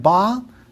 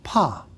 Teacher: change in the timing of the onset of your vocal cords the so-called voice onset time if you start the voicing at the same time you release · If you start the voicing at the same time you release that built-up pressure from behind your lips, you hear ba. If you wait about 15 extra milliseconds, it comes out as pa. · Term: Short voice onset time